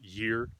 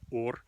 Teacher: Scandinavian always loses the sound y at the beginning of words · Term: loses the y